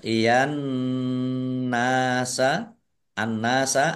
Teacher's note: Nun tasdid dibaca gunnah atau mendengung ditahan biar tampak dengungannya